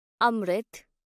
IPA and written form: ˈəmrɪθ (amrit)